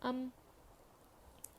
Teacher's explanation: میم دونوں ہونٹوں کے سوکھے حصے سے ادا ہوتا ہے. میم پر جزم ہے اور جزم کو پچھلے والے حرف کے ساتھ ملا کر پڑھیں گے.